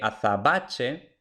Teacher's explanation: Vemos otra vez que azabache, nuevamente tenemos que la B no es oclusiva, sino que es aproximante. Y luego, por supuesto, el dígrafo che, ¿no?